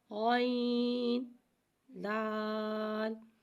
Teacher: غین حرف مستعلیہ ہے لہذا ہم اسے موٹا پڑھیں گے، غین کی آواز حلق سے ادا ہوئے گی۔